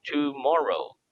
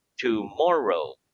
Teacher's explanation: accent is for example the word tomorrow has three syllables tomorrow the accent in the word tomorrow is on the second syllable